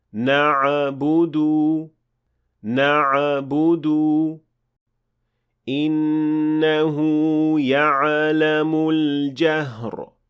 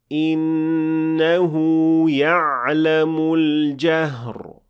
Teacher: adding qalqala to ayn with sukun